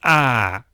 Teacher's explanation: normal ah which linguists call modal voice but also breathy voice ah and creaky voice